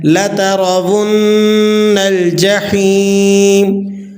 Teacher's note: کس طرح سے پڑھیں گے؟ لا ترون، نون مشدد ہے، آپ نے غنہ ادا کر لینا ہے